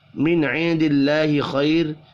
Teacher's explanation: من عند اللہ خیر نون ساکن کے بعد عین ہے، اظہار حلقی ہوگا، غنہ نہیں ہوگا، نون ساکن کے بعد دال ہے، اخفاء حقیقی ہوگا، اللہ کا نام زیر کی وجہ سے باریک پڑھا جائے گا